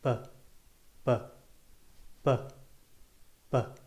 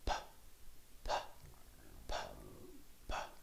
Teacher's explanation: The only difference is B is voiced, which means that we use our vocal cords to produce the sound. If you feel your neck when you say the sound, you should feel some vibration.